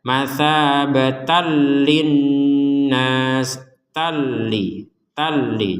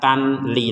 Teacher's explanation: kalau kita berhenti menjadi matabah seperti itu kalau dilanjutkan maka menjadi tanwinnya dimasukkan ke lam sehingga langsung dibaca